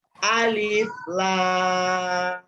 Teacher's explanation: Nah, di huruf lam itu ada tanda alisnya, maka lamnya dibaca 6 harakat.